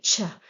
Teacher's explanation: Sometimes when we want to be precise, we add t to the sha to give the exact sound cha. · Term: ch sound